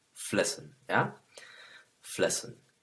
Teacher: la pronunciación de las últimas en en el plural es la e muda de la cual hemos estado hablando.